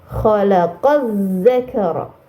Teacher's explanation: Ini dinamakan alif lam syamsiah. Maka alif lamnya tidak dibaca ya. Langsung dibaca ke huruf za-nya.